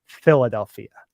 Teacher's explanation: Philadelphia will swallow their L's to a certain extent too so the L's will sound like a w